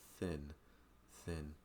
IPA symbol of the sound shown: θ